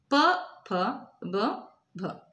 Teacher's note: ಓಷ್ಠ್ಯ ಅಂದರೆ ತುಟಿಯ ಸಹಾಯದಿಂದ ಉತ್ಪತ್ತಿಯಾಗುತ್ತೆ.